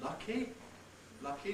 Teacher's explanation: what's commonly described as unaspirated but in fact may have a little bit of aspiration